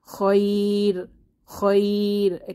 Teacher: আমরা এটা মোটা করে না পড়ে পাতলা করে র এর ধ্বনিকে পড়বো